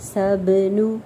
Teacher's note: ب قلقلہ اچھے سے کرنا ہے